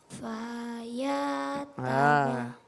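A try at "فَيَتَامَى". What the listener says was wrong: Ingat nak, ini pendek. Jadi bacanya Fayatama.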